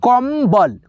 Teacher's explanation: कम्बल जो अन की मात्रा है इसका उच्चारण देखो क्या हो रहा है, म हो रहा है